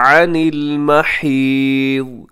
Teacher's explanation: यहाँ अनिल में आइन का ख़ास ख्याल रखिएगा और महीद इसमें आखिर में हरफ ज़ाद, इसे आपने मोटा पढ़ना है और वक़फ़ करेंगे तो इसको हम साकिन कर देंगे।